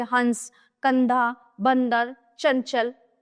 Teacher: अनुस्वार इसका उच्चारण नाक से होता है।